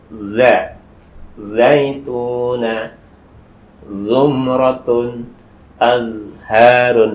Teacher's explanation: za ini ujung lidah ditempelkan kepada gusi atau pangkal gigi seri bagian bawah.